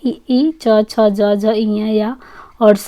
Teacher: ई च छ ज झ इया या और सा तालव्य वर्ण है, इनका उच्चारण तालु और जीभ के स्पर्श से होता है।